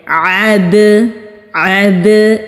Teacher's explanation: جب ہم بال کو زمین پر پھینکتے ہیں تو اس کے پھینکنے سے جو آواز پلٹ کر آتی ہے اسی طرح سے دال کی آواز بھی پلٹ کر آتی ہے تو اس کو قلقلہ کہتے ہیں۔ عید، عید، یہ جو اینڈ میں آواز آ رہی ہے دال کو ادا کرنے کے بعد اس کو قلقلہ کہتے ہیں۔